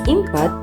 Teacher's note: For example, input is often pronounced as input because the N changes to M before the P sound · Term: assimilation